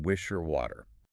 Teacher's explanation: W is voiced, meaning the vocal cords vibrate, and technically it's a semi-vowel, like Y.